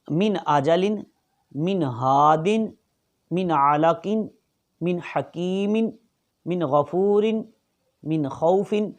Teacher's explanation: یہاں کیونکہ تنوین کے بعد حمزہ آ گیا تو اس وجہ سے یہاں غنہ نہیں ہوگا، یہاں اظہار ہوگا۔ غنہ کہتے ہیں ناک میں آواز لے جانے کو، تو ناک میں آواز لے جانا یہاں بنتا نہیں ہے